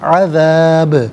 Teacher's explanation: لہم العذاب یہاں وقف کریں گے تو عذاب پڑھیں گے، با ساکن تو ہے لیکن حرف قلقلہ ہے تو یہاں جو ہے وہ با ساکن کو قلقلہ کے ساتھ یعنی آواز لوٹتی ہوئی محسوس ہونی چاہیے